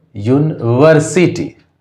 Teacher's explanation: यूनिवर्सिटी मतलब वर्सिटी में यहाँ पर प्राइमरी स्ट्रेस है, यहाँ ज़्यादा एम्फेसिस है और यहाँ पर कम एम्फेसिस है।